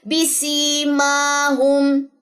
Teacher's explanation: میم کے اوپر کھڑا زبر ہے, 2 سیکنڈ لمبا ہوگا